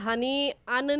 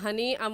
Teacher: یہاں پر ہنی ان نہیں ہوگا بلکہ ہنی ام ہوگا، یہاں پر اقلاب ہو رہا ہے